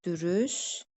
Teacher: Yəni burada T səsi düşəcək. L səsi D səsinə keçəcək. K səsi İ səsinə keçəcək. Yazılış dəyişərsinə 3 fərqli məqam olacaq.